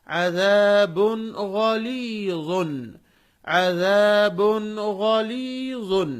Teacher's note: با پر تنوین ہے، ہم اس کی آواز کو ظاہر کر کے پڑھ رہے ہیں، کیوں؟ اس کے بعد غین ہے اور غین وہ حروف حلقی میں سے ہے۔